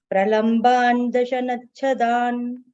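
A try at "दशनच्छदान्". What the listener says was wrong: Dashanachhadan, correct.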